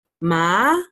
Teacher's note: the second one is kind of like an up tone, so you kind of do a little ma, like a up towards.